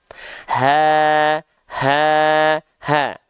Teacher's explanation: Dia berada dari pangkal tenggorokan area yang berwarna ungu di sini. Tepatnya pangkal tenggorokan pita suara yang membuka. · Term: hak besar